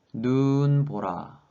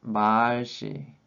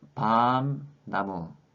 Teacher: the first part of syllable can have a long vowel